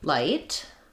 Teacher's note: my tongue will lift to the front behind my teeth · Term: light L